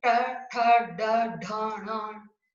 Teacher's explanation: उसमें जीभ है वो उल्टी होकर अपने तालवे से टकराती है, इसको क्या बोलते हैं, मूर्धा।